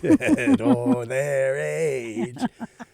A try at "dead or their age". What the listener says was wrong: Don't try to add another syllable to make it